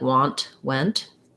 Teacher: we often use a stopped t at the ends of those where it's not a strong t like want went but if i'm saying it by itself i